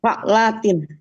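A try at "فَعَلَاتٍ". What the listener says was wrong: Tilanya tuh harus agak dipanjangkan. Fa'latin agak dipanjangkan, Bu.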